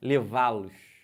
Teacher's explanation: O lois é um monossílabo, mas é um monossílabo fraco. Você não fala com muita força, ó, levá-los. Olha como é que eu nem abro a boca quase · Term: monossílabo átono